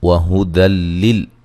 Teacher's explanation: را کو موٹا ادا کریں گے اور یہاں نون تنوین کا ادغام مع الغنہ ہے. وہدی لل یہاں نون تنوین کا ادغام ہے لیکن بلا غنہ ہے